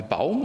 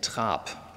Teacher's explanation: Das ist stimmhaft hier, Baum, und das ist stimmlos in Trab.